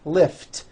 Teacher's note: lift ends with an unvoiced t